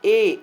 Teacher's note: ए का उच्चारण करते हैं तो क्या होता है तालू से टच होते हुए कंठ की ओर समाप्त हो जाता है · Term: कंठ तालव्य स्वर